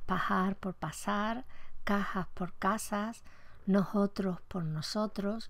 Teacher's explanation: la aspiración que inicialmente es propia de la s en posición final de sílaba en posición implosiva se ha extendido también a la posición explosiva y sobre todo cuando va en posición intervocálica a la derecha